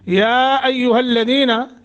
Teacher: या को लंबा करेंगे, मद्द मुनफसिल है